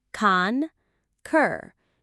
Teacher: The stress is on the second part, concur. It sounds a little bit like the purring sound a happy cat makes, but with a K sound at the start.